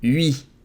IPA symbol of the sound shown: ɥ